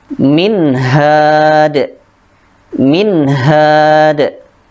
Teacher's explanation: nun sukun bertemu dengan huruf ha, dibaca jelas